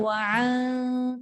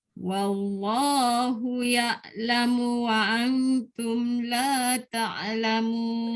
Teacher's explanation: Dia bukan ain, dia hamzah. Bukan wa'an.